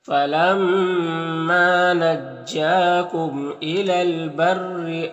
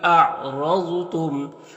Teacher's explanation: مشدد کے نیچے زیر تو را کو باریک پڑھیں گے، اور را کو اوپر زبر تو را کو پر پڑھیں گے